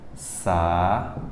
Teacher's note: Você nota que o acento recaiu sobre a segunda, separou-se. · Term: hiato